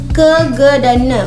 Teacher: Bunyi ini terjadi akibat pangkal lidah menyentuh langit-langit lunak. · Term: bunyi dorselar